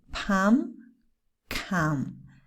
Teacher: palm and calm again no l not even a little bit